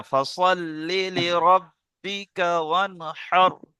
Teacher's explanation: ওয়ানটা গুন্না হয়ে যাচ্ছে, গুন্না হবে না